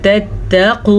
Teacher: ये वाव मद्दा है तो इसे हम वाव मद्दा को खींच के पढ़ेंगे और क़ाफ को पुर पढ़ेंगे